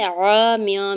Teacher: میم کی نیچے دو زیر کی تنوین پر اخفا ہوگا